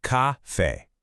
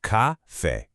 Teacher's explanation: So, why does it sound like that? Well, the a with that accent mark gives us a really strong, open eh sound. It's not a like your standard English café, it's eh.